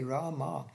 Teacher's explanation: Rama with a long a in the end